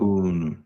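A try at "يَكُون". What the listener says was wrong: Not Yakuno, but Yakun. You see the difference?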